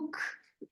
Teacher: जैसे हम इंग्लिश में एक लफ्ज बोलते हैं ना, this is a बुक, this is a बुक, तो हम कहते हैं बुक, हम बुक नहीं कहते, बुक, इतना कड़क नहीं बोलते। अंग्रेज भी जो है के को ऐसे हल्का सा ख बोलते हैं। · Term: हम्स